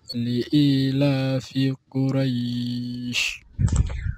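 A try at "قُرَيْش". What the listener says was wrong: Quray, the ra, not heavy. It must be Qura, not Quraysh. Quraysh.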